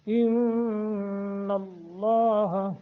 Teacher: نون مشدد ہے، غنہ کریں گے، لفظ اللہ کو منہ بھر کر پڑھیں گے